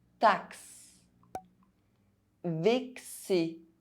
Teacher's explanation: Inside French words, X between two vowels is pronounced [ks]